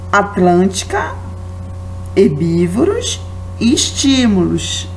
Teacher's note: Temos a sílaba com mais força, antepenúltima. Então, a terceira da direita para a esquerda